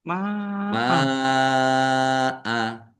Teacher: Tetapi karena bertemu dengan huruf hamzah dalam satu kata maka menjadi mad wajib muttasil. Ini dua-duanya mad wajib muttasil masing-masing dibaca panjang lima harakat.